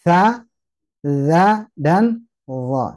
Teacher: ujung lidah menyentuh ke ujung gigi seri atas atau dindingnya atau kelihatan lidahnya